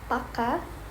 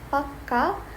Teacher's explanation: with a longer K means firm. This longer sound is called a Gemini, and it lasts about twice as long as a normal or single thought.